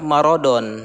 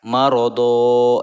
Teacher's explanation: Tanwinnya diganti dengan harokat fathah dan dibaca panjang. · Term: mad iwad